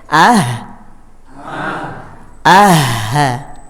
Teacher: jadi hembuskan dulu anginnya itu sifat eee hams atau sifat huruf H yang menghembus